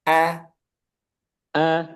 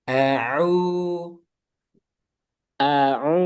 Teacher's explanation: A itu pangkal tenggorokan. Kalau ain tengah tenggorokan.